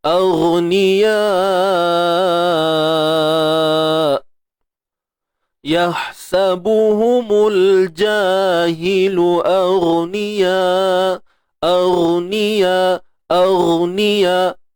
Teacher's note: Hujung kerongkong. Huruf ghain dengan kha tempat sama hujung kerongkong.